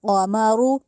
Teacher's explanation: ये जो रॉ है इसको भी मोटा करके अदा करना है, पूर करके अदा करना है, इसको कामारू नहीं कहना, क़मरु, ठीक है।